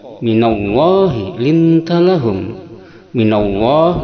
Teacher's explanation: Fabima rahmatin minallah ini hukumnya tafhim, itu dibaca tebal dengan bunyi o.